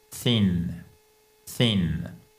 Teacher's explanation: Donc vous passez votre langue entre la les dents du bas et les dents du haut. D'accord ? Thin, elle doit sortir cette langue thin. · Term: soft th